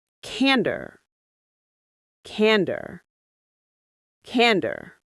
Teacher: The stress is right at the front.